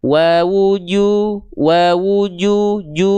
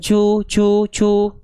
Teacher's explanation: jangan sampai ketika teman-teman melafalkan huruf jim keluar percikan-percikan nafas. Wawuju, enggak, tapi wawuju, wawuju, ju, bukan cu, cu, cu.